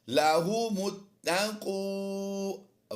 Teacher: إِلَى حِينٍ وَإِذَا قِيلَ قِيلَ لَهُمُ اتَّقُوا وَإِذَا قِيلَ لَهُمُ اتَّقُوا میم کو تا سے ملائیں گے، الف خالی ہے، سائلنٹ رکھیں گے اسے · ملائیں گے، الف خالی ہے، سائلنٹ رکھیں گے اسے، لَهُمُ اتَّقُوا واو مدہ ہے، لمبا کریں گے ایک الف